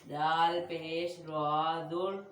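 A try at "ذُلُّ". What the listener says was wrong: इस जाल बारीक है जाल पेश राजुल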